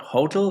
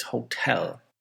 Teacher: learner English, we tend to put the word stress on the first syllable. And native English will put it on the second one.